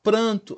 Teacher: Pranto, aqui eu tenho um encontro consonantal, PR, e aqui no A, ó, AN, PRAN, eu tenho uma nasalização do A pelo N. Então eu tenho um dígrafo vocálico, porque eu formo um único som, que é o do A anasalado, só que através de duas letras.